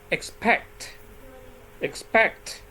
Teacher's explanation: in this word the stress is on the second syllable I pronounce packed stronger and louder and X not so strong